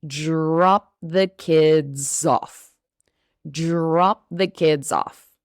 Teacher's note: in English, the DR sound, drop, sounds like a J.